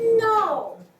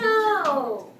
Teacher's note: So you must start it from high pitch and go down.